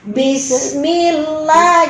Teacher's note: sin itu punya sifat rokoah. Dia berjalan, tapi jangan terlalu lama.